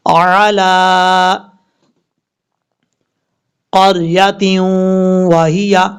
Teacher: را ساکن سے پہلے زبر ہے، اس لیے را کو پر پڑھیں گے